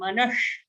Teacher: So here we have a shatkon ka sh. Yeah, tongue will curl back a bit. It's a murdhanya sound. Manash. Manashashtha, shashtha.